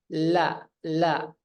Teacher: keluar napas itu bukan di tengah la la tapi di samping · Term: inhiraf